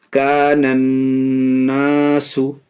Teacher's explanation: یہاں بھی دیکھیے الف اور لام دونوں ہیں، یہ الف اور لام کے بعد نون، یہاں دیکھیے نون یہ حروف شمشی میں سے ہے، اس لیے الف اور لام دونوں کو نہیں پڑھیں گے، بعد والے حروف نون سے ملا کر کے پڑھیں گے۔ نون میں تشدید ہے، اس لیے نون اور میم اگر مشدد ہو تو گنہ ہوگا، ناک میں آواز جائے گی، اس لیے ناک میں آواز یہاں لے جا رہے ہیں، گنہ کر کے پڑھ رہے ہیں۔